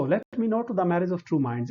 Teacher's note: 10 syllables in each line and 5 feet in each line each foot contains one unstressed syllable followed by a stressed one